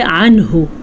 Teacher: عنہ ظاہر کر کے پڑھنا ہے نون کو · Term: اظہار